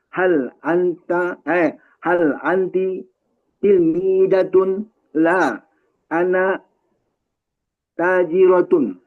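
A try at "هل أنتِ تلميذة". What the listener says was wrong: Iya, ini nadanya coba pakai nada Arab ya. Kalau nada Indonesia, akhir semua kata jadinya panjang. Hal anti, oh, kok jadi anti panjang begitu? Hal anti, ya gitu. Penekannya kalau ada sukun itu ya. Hal anti til mi zatun la ana tajirotun. Kayak gitu tuh gaya-gayanya. Tapi kalau gaya bahasa Indonesia jadinya begitu.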